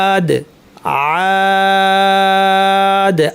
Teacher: আলিফের আওয়াজটার সময় খোলা গলায় হবে, হ্যাঁ, আলিফের আওয়াজটা যেন চাপা না হয়